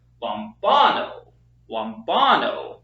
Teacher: We have lom, bon, amen, but the emphasis is not on this syllable, it's on the second syllable, lombano, lombano, because again we have the accent on the second syllable.